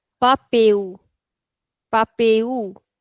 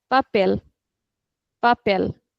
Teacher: So the end sounds like a u in Brazilian but in European this is papel.